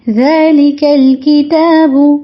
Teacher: کاف تا با تینوں باریک پڑھے جائیں گے